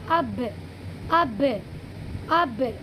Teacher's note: एकदम होंठ दोनों मिलेंगे, एकदम खुलेंगे